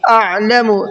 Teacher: عین کو بھی حلق سے نکال کر پڑھنا ہے، اگر عین کو حلق سے نکال کر کے مخرج سے نہیں پڑھیں گے تو پھر یہ حمزہ بن جائے گا